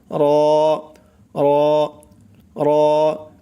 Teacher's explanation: কোথায় থেকে উচ্চারণ হয় র র মোটা করে র আবার বলি জিহ্বার আগার পিঠ তার বরাবর উপরের তালুর সঙ্গে লাগাইয়া · জিহ্বার আগার পিঠ মানে জিহ্বার মাথা যে আছে সেই মাথার পিঠ তার বরাবর উপরের তালুর সঙ্গে লাগাইয়া উচ্চারণ হবে